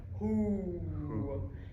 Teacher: the formant 1 spacing is large and the formant 2 spacing is large as well. So you were correct with both of them being a little bit more open, and you can hear that with a hoo.